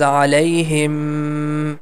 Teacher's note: the meme has shadda sign, so we have to make the sound for two count. Him sound we have to stretch little bit.